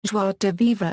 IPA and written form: ʒwa də vivʁ (Joie de vivre)